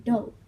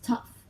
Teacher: for some GH words, English speakers eventually dropped the guttural sound altogether. For others, they ended up pronouncing it as F instead